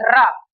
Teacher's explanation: तो जीभ हमारी मसूड़े को स्पर्श करती है। जो आगे का भाग है जीभ का वो मसूड़े को स्पर्श करता है। और मसूड़े को जब स्पर्श करता है तो वहां पे थोड़ी कंपलन होती है। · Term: प्रकंपित व्यंजन, लुंठित व प्रकंपित व्यंजन